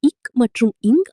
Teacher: நாவின் முதற்பகுதி அன்னத்தின் அடிப்பகுதியை பொருத்துவதால் பிறக்கின்றன